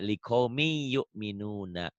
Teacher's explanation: n-nya melebur jadi y